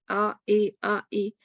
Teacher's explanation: اصطلاحی معنی الف کو یا کی طرف اور زبر کو زیر کی طرف مائل کرنا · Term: امالہ